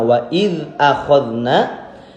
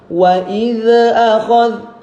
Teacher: sebelum kita mengucapkan hamzah jangan dilepasin zalnya. Wa idz akhadna, nah, supaya pantulannya gak keluar.